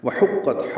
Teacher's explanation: لِرَبِّهَا، لام کو جلدی پڑھیں گے، را پر پڑھیں گے، با سے ملائیں گے، ہا الف مدہ ہے، دو حرکات لمبا ہے۔ وحقت، ہا وسط حلق سے ادا کریں گے، قاف سے ملائیں گے، قاف پر پڑھیں گے اور تا سے ملائیں گے، تا ساکن ہے، پتلا پڑھیں گے یعنی باریک، اور اس پہ ہمس کریں گے۔